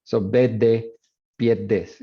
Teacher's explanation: You lose the R, so drop the R, and then increase the duration of D. So verde becomes bed. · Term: geminated D